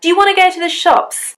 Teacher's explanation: We've used you in a weak form. We've used the schwa there.